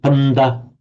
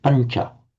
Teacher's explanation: The n becomes slightly palatized because of the immediately following palatal ch sound